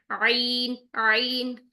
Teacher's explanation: आप देख रहे होंगे इसमें सेकंड पिक्चर में जुबान की डायरेक्शन देखिए कि वो पीछे की तरफ मजबूती से पीछे की तरफ जा रही है जिसकी वजह से यहां पे टक्कर हो रही है और साउंड जो है वो रगड़ खाती हुई निकल रही है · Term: आइन